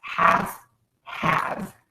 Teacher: Half and have. And in the word half, we do not say the L sound. We just say the F.